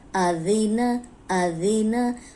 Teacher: اوپر سامنے والے جو 2 دانت ہیں ان کے کنارے پہ زبان رکھ کے ادا کریں گے تو سیٹی کی آواز نہیں آئے گی، ورنہ یہ زا بن جائے گا۔ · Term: ذال